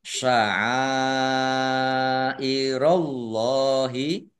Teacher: Allahnya dibaca tebal karena harokat di depannya fathah.